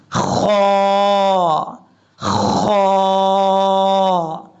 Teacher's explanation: یہ جو خا ہے یہ حروف مستعلیہ میں سے ہے، پر پڑھا جائے گا. اور خا کو پڑھنے کے لیے آپ کو پتہ ہے منہ کا جو خالی حصہ ہے وہاں سے ادا ہوتا ہے.